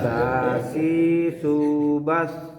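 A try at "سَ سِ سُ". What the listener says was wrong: mundurkan lidahnya. Sasi subas. Kalau Bapak barusan sasi subas, memang di ujung, tapi bukan berarti lidahnya melebihi gigi seri. Jadi Bapak terdengarnya sasi, memang tidak seperti itu banget, tapi terindikasi ya hampir seperti huruf ta, bukan sin.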